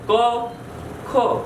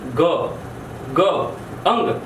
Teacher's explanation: તમે ક બોલો, તમે ખ બોલો ને એના રેફરન્સમાં તમે ગ, વધુ પડઘો પડે, વધુ ધ્રુજારી આવે. ગ, અંગ. અને એ જ્યારે વધુ ધ્રુજારી એ કયા વર્ણો છે કંઠના જોઈએ તો ગ, ગ, અંગ. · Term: ઘોષ